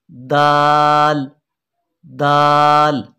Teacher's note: ज़बान की नोक को सामने ऊपर वाले दांतों की जड़ से मिलाने से दाल अदा होगा।